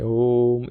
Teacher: जब भी मैंने ओम बोला है तो उसको थोड़ा सा डिटेल में बोला है, थोड़ा सा लंबा बोला है, ओम, इस तरह से सब लोग इसको बोलते हैं। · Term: प्लुत स्वर